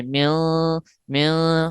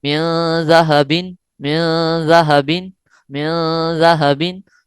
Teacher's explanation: غنہ کیسے کرنا ہے کہ ناک کے بانسے میں آواز کو چھپا لینا ہے. ٹھیک ہے، نون ساکن کی آواز کو ناک کے بانسے میں چھپا لینا ہے